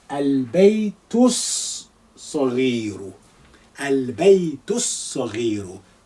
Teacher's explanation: when you're reading across, you suppress the alif because it's not at the beginning. You will also suppress the lam in this case because of existence of this sod, which is a sun letter.